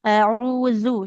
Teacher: Huruf zal ujung lidahnya nempel ke ujung gigi dari atas